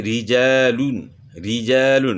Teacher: ریجالون را کے نیچے زیر ہے تو اس کو باریک پڑھنا ہے۔